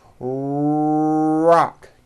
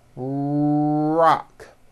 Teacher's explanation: right now so for example in the word Rock notice how my lips are coming forward and my tongue moves back in my mouth and I push out the r sound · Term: American R sound